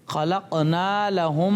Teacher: इदगाम शफवी. इदगाम शफवी यानी गुन्ना करके पढ़ेंगे